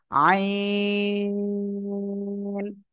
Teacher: আইন অক্ষরটা গলায় চেপে আমরা উচ্চারণ করব কোন বাতাস বের হবে না · হলকের মধ্যখান থেকে গলা চেপে উচ্চারণ করতে হবে